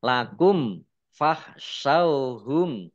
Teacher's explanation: mim sukun bertemu dengan huruf Fa bacaan izhar syafawi dibaca jelas